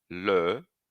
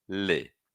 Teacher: Que a posição da língua, o ponto de articulação da língua dentro da boca, entre e é a mesma. O que muda é o arredondamento do lábio.